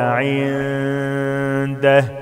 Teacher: نون ساكنة وبعدها دال إخفاء مع الغنة حركتين